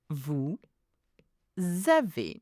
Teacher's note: We call that a liaison. It's purely because vous has an S at the end, and we do the liaison.